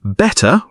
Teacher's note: Keep T crisp in RP, say better with a clear T, not a flap